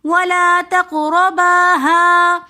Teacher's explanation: کھڑا زبر ہونے کی وجہ سے ہم ہا کو ایک الف کی مقدار کھینچ کر پڑھ رہے ہیں۔ ولا تقرباها، هذه الشجرة میں جو ہا ہے اس کو شجرہ کے جیم کے ساتھ ملا کر پڑھیں گے، حمزۃ الوصل درمیانے کلام میں آنے کی وجہ سے گر جائے گا۔